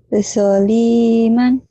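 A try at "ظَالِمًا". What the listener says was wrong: Panjang soalnya. Jangan so, zo, zo, Z-H-O. Tapi jangan dimonyongin ya. Jangan zo, jangan zo. Zoliman, zo. Jangan disokan lagi, jangan dipecahin. Zoliman.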